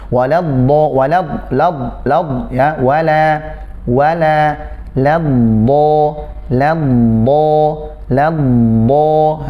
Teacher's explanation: Ketika antum masuk ke huruf dot, jangan sampai lamnya terbawa tebal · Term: Lam tipis, dotnya tebal